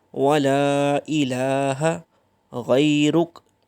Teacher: لام کے اوپر مد ہے، اس کو بھی تھوڑا سا لمبا کریں گے۔